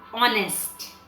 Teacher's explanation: It starts with letter H, but the H is silent. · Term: silent H